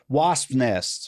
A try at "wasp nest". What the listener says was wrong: It sounds like you're lisping. Wasp nest. I don't like a bunch of S's close together.